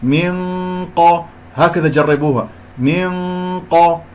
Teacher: القاف مرتبة ثانية، إذن غنة الإخفاء سوف تكون مرتبة ثانية، يعني لما أرفع أقصى اللسان في غنة الإخفاء لكي يأتي بغنة مفخمة